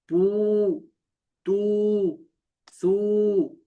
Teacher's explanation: الٹا پیش ہونٹوں کو گول کر کے تھوڑا سا کھینچ کر پڑھتے ہیں